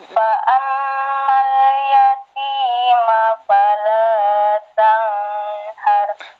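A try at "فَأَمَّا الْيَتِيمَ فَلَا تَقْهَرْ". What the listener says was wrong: Kok tanghar yang di sini sayang. Jangan diparo-paro. Fa'ammal ada hunanya. Huna asli.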